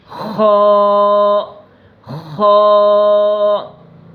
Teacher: خو حلق کے اوپر والے حصے سے